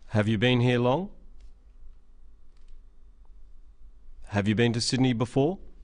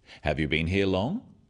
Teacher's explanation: Questions that start with have you are yes-no questions, so they have a rising tone.